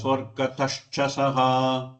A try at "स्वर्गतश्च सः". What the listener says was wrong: சொர்க்கதஷ்ச சஹா, அந்த தா சாதாரணமா தான் சொல்லணும். அத சொர்க்கதஷ்ச அப்படியே அது மகாபிராணமாயிரும். சொர்க்கதஷ்ச சொர்க்கதஷ்ச சஹா சொர்க்கதஷ்ச சஹா சொர்க்கதஷ்ச அப்படி அத அமிழ்த்தினா மகாபிராணம்